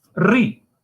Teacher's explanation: For example, instead of rec, instead of instead of back, rec, right? Omission of the f as in cluster fr, so free pronounced as ri. The omission of the r in cluster pr, so as in probably and project.